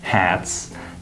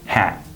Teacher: when they say a plural word like hats they might say it without the s at the end just hat